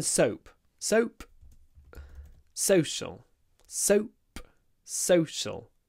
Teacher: it's clipped before the sh the unvoiced sh